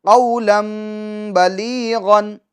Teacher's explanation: بلیغن میں با، اور با یہ حرف اقلاب ہے، ٹھیک ہے، تو نون ساکین یا تنوین کے بعد، تو تنوین کے بعد حرف با آنے کی وجہ سے یہ جو تنوین کی آواز ہے اس کو کس سے بدل دیں گے؟ میم میں بدل دیں گے